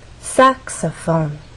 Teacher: the stress syllable is the first one which means we have have two more syllables to make our voice fall down and actually can fall down even further the more unstressed syllables · to use one syllable to make our voice Glide up clarinet in the case of saxophone there are also three syllables but the stress syllable is the first one